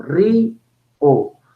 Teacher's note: la i es una vocal cerrada y la o es una vocal abierta y están en sílabas distintas dice dos vocales en dos sílabas distintas ri o vocal cerrada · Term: hiato